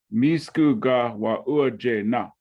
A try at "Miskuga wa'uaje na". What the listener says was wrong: Yep, just like that, right?